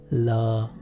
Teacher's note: अतः ऐसे व्यंजन जिनके उच्चारण में जीभ श्वास वायु के मार्ग में खड़ी हो जाती है, अर्थात वायु मार्ग को अवरुद्ध कर देती है और हवा निकलने के लिए अगल बगल का रास्ता खुला हुआ होता है, तो हवा अगल बगल से निकल जाती है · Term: पार्श्विक व्यंजन